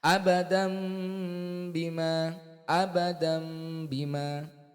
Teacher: Dua bibirnya itu dirapatkan serta didengungkan. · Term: iklab